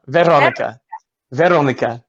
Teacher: you roll the R a little bit